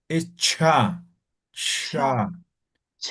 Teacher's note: Ya te falta la aspirada de la H.